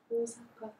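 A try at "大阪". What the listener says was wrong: 예, 오사카 약간 길어집니다. 오사카. 그러니까 물론 뭐 일본어 발음 교정이 아니기 때문에 자세히 안 하겠습니다만 일본어 오는 한국어 오보다 짧습니다. 그런데 두 개를 넣으면 한국어 오보다 더 길어집니다. 그래서 오사카 되죠. 오사카. 예, 우리는 어떻게 해요? 오사카 이러죠. 오사카.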